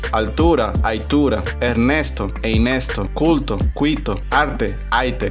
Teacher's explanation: la transformación de la L o inclusive R al final de una sílaba en I o Y vocálica